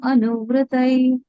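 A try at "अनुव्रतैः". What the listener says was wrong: Anuvritaihi, there is a visarga.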